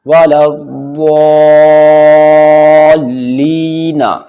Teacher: یا ساکن سے پہلے لام کے نیچے زیر ہے اس لیے یا مد ہوگا یعنی کھنچ کر پڑھا جائے گا